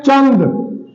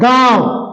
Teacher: अनुस्वार में हवा केवल नाक से निकलती है और अनुनासिक में हवा मुह और नाक दोनों से निकलती है